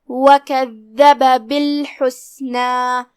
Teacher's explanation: कलिमत वकज़्ज़ब में यहाँ दाल है और उस पे तशदीद है, दाल को हम ज़बान के सर और ऊपर वाले दांतों के अंदरूनी किनारों से अदा करेंगे और उसे 2 हर्फ के मकदार में पढ़ेंगे क्योंकि उस पे तशदीद है।